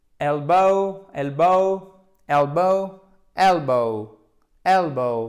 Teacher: Faites bien l'accent tonique sur la première syllabe